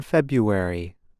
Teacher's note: R is not pronounced. Instead, speakers make a y sound.